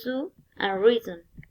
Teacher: The articulators involved, the tongue comes into contact with the alveoli, is alveolar, and the articulation mode is fricative. The sound of this word is z.